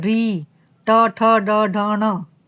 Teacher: री, ट, ठ, ड, ढ, ण, ये सारे जहां पर लग रहे हैं जीभ ऊपर उसको मूर्धन्य, मूर्धा स्थान बोलते हैं